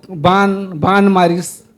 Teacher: णा ओकर जगह में सीधा सीधा ना का प्रयोग होते